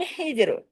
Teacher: जीम पे कलकला होगा